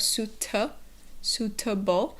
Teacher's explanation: it's suit suitable the other thing to keep in mind is that second syllable has the schwa sounds you have suta suitable so it's not suitable but it's suitable